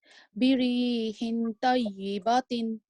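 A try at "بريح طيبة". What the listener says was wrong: So you said birihin. The ha dozir, which is the tanween, is got the letter noon in it. Birihin. So this noon is the one that we need to hide and nasalize. So we hide it from our mouth.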